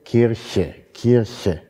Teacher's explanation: Und irgendwo ein R-Laut, dann dieses Sch, also der palatale Frikativ und dann ein Schwa, ein Neutralvokal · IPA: [ˈkirçə]